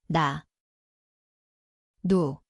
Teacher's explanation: It sounds like N. The place is the tongue tip, upper gum.